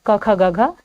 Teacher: क वर्ग के सभी वर्ण क्या होते हैं कंठ से उच्चारण होता है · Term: कंठ ध्वनि